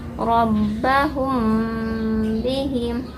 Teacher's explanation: ada mim sukun bertemu huruf ba hukumnya Ikhfa Syafawi jadi tahan dulu